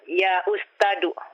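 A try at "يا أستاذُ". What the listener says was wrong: Ustadu. Dzal, bukan dal ini, dzal.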